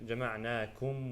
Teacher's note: إظهار, the غنة is very minimal.